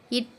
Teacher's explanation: எழுத்து பிறக்கும் இடம் தலை வல்லின எழுத்துக்கள் பிறக்கும் இருக்கும் இடம் வல்லினம்னா மார்பு நாவின் நுனி அன்னத்தின் நுனி